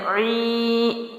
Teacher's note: عین باریک ہے، حلق سے ہے، حمزہ اور عین کی آواز میں ہمیشہ فرق رکھنا ہے۔